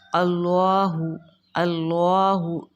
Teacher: اللہ کے لام سے پہلے زبر ہے تو اللہ کا لام پر ہوگا